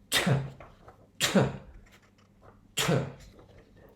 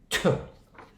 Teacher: T is a short plosive sound.